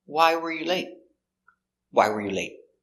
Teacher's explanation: Why is the important word, so we stress the question word why.